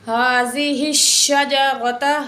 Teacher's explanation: ہا کے نیچے زیر شین کے ساتھ ملائیں گے